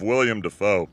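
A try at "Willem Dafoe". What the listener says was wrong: It's not William, it's Willem.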